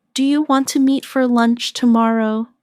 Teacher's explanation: In casual speech, do you want to often sounds like do you wanna?